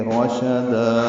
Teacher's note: رشدا میں شین کو جلدی پڑھیں گے، دا الف مدہ مد عوض بنے گی، وقفاً 2 حرکات لمبا کریں گے